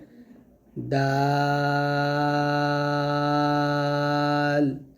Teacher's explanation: দালটা আমরা পাতলা করে উচ্চারণ করব এবং 4 আলিফ টান দিব। যেমন হবে দাল, এরকম। · তারপর হচ্ছে দাল। দাল হবে জিহ্বার আগা সামনের উপরে 2 দাঁতের গোড়ার সঙ্গে লাগিয়ে দালটা আমরা পাতলা করে উচ্চারণ করব এবং 4 আলিফ টান দিব।